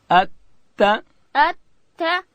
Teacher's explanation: اب تا ادا کیږي د ژبې سر به د لوړې زامې د مخ د دوو غاښو و بیخو ته ورړو. اتا اتا اتا او دلته به ژبې ته ګورو چې د باندې راونوځي، داسې به وایو اتا اتا.